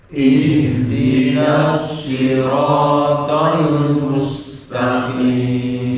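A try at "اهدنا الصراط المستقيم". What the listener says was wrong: ada yang enggak betul mustaqim mesnya bukan mes ya mus dari mu-nya harus sempurna mu jangan sampai dari mes oh ditarik mes akhirnya enggak mes enggak mencucu yang betul mencucu dulu mustaqim ya coba ya nomor absen 1 nah, Pak minta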